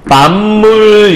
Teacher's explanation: 그럼 왜 비읍이 미음으로 바뀐 거지? 비음이 아닌 것이 비음, 미음을 만나서 비읍은 미음으로 좀 바뀐다면서요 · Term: 비음화